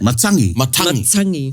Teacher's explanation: the majority, if not all of their T sounds are the sibilant T sounds, sharp T sounds